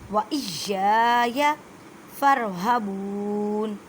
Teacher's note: یا کو مضبوطی پڑھیں، کیونکہ یا مشدد ہے یا اور یا کو ایک الف کی مقدار میں کھینچ کر پڑھیں.